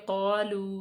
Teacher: واو ساکن سے پہلے پیش ہے، اس کو لمبا کریں گے